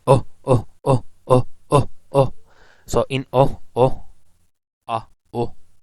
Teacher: glottal stop if you say oh so in oh oh oh between these two words you are actually producing a glottal stop